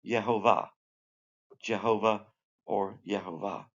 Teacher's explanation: But if you just make the J a yay, a Y, the Y sound, it would be Yehovah. The accent's always on the last syllable.